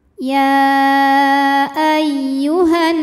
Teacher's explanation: wajibul gunah atau gunah musyaddadah atau Nun musyaddadah karena nunnya bertasdid cara bacanya dengung bunyi n-nya tahan sampai ada suara masuk hidung kurang lebih dua harakat